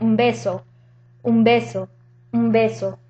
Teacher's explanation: you say that quickly it sounds like so that's assimilation because the N is taking the point of articulation of the B · the N takes the point of articulation of the B. So it'll actually sound like an M. For example, when you say un beso, when you say that quickly, it sounds like un beso, un beso, un beso.